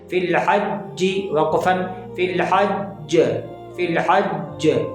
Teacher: اب یہاں پر جو قلقلہ ہوگا وہ قلقلہ اکبر ہوگا، یعنی سب سے بڑا والا قلقلہ ہوگا